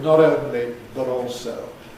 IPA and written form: ˈnɒt̬ ˈəʊnli bət̬ ˈɔːlsəʊ (not only but also)